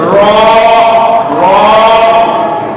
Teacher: জিহ্বার অগ্রভাগের পিঠ সোজা উপরে তালু দিতে হবে, পুরো অগ্রভাগের পিঠটা এটা উপরে চলে যাবে র র।